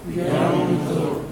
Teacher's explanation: We're going to drop the noon or noon sakina, but not dropping it fully. It is between the idgham and the idhar. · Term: ikhfa